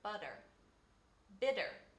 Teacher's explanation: you also probably use an alveolar tapped r or just a tapped r when you say words like butter